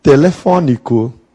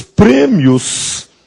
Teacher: Em Portugal eles costumam usar o som aberto no Brasil nós costumamos usar o som fechado